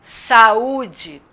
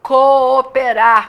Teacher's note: Eu tenho as vogais em sequência na palavra e como são vogais e cada sílaba só pode ter uma vogal, eu vou pronunciá-las separadamente e separar a sílaba delas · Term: hiato